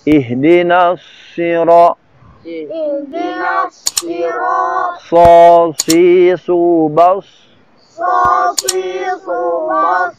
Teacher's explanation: Huruf sod dia tebal. Cara menebalkannya adalah ujungnya dibelokkan ke kiri atau ke kanan. Sehingga anginnya belok sana.